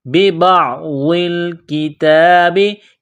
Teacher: کاف کو باریک کرنا ہے، تا کو باریک کرنا ہے، ایک الف کے لمٹ میں کھینچنا ہے تا کو